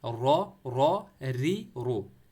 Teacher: री वाले कंडीशन में इसको पतला पढ़ेंगे